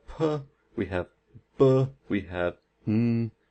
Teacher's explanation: So, when we make bilabial sounds, what we do is we close the lips